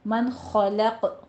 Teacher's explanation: کیونکہ حروف حلقی میں سے خو آ رہا ہے، من خلق، قوف پہ قلقلہ کریں گے وقف کی صورت میں